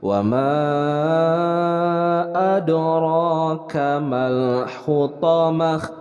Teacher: ro-nya adalah dibaca tebal karena ini adalah ro tabkhim